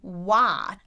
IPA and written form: wat (what)